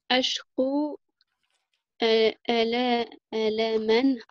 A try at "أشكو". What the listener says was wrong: Alors, c'est un kaf, non pas un qaf. أشكو. Essaye de ne pas faire le qo. أشكو.